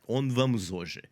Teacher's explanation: The h in hoje is always silent, so it just it's just not there.